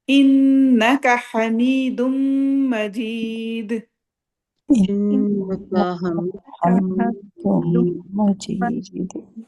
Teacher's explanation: اب نون پہ شدہ آ گئی تو ہم نے ناک میں ٹھہرانا ہے